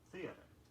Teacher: Stress the first syllable only, theater.